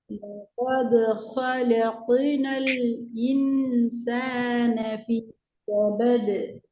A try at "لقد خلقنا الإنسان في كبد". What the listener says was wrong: في كبد في என்ன தன்மை ராகம் எடுங்கோ. ராகம் எடுக்க செல்றது ஒரே மூச்சில ஓதுறது அர்த்தம் அல்ல. ராகத்தை எடுத்து ஓதுங்க.